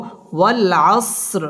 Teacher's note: ওয়াও আমরা ঠোঁট গোল করে উচ্চারণ করব।